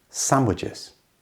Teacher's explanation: Notice that the D in the middle is completely silent.